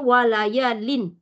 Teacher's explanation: izhar maksudnya jelas jelas pendek tidak berdengung bacaannya wayalin Lin gitu a wayalin tak boleh tak boleh dengung